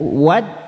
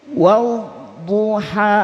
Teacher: Huruf dhad itu nanti secara makhraj sisi lidah menyentuh gigi geraham. Gigi yang sering dipakai mengunyah makanan ya.